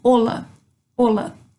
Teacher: Não pronuncia o som do H